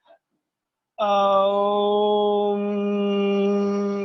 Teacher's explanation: ओम के उच्चारण में म में भी हम तिगुना समय लगा देते हैं। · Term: प्लुत स्वर